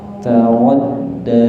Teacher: taradda, ra-nya kurang tebal sedikit